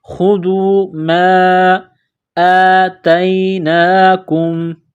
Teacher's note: الف کے اوپر کڑا زبر ہے، ایک الف کے لمٹ میں کھینچنا ہے